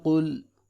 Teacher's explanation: قاف پیش لام قل، قاف کو موٹا کر کے پڑھیں گے کیونکہ یہ حروف مستعلیہ میں سے ہے